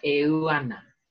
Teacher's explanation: So you've got two A's together on the end of ua and on the start of ana. We string them together, e, ua, ana.